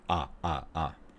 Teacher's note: This is a low central tense vowel. So we lower our jaw and our tongue. Mouth goes down. Lips should be very open, but not wide. Tongue should tighten, not relaxed.